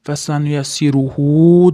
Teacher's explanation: hu dan keyin vavcha turibdi. Cho'zamiz ozgina.